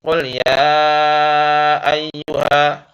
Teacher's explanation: maka dibacanya panjang 5 harokat atau 2,5 alif ya. Jadi qul ya ayyuha ya, ya 5 ketukan ya.